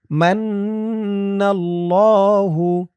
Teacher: মান মিম দিয়ে নুন ধরবে ওয়াজিব গুন্না। মিম নুন জবর মান, নুন দিয়ে আবার এই তাসদিদ ওয়ালা লামকে ধরবে।